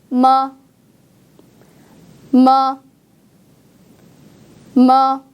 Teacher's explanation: 자음, 무 소리는 여러분의 윗입술과 아랫입술을 닫았다가 떼면서 공기를 코 밖으로 내보내는 소리인데요.